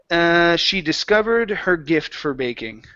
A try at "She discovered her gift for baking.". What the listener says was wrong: Okay, add that D at the very end. Discovered.